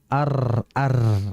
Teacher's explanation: huruf ro ini memiliki sifat yaitu itu bergetar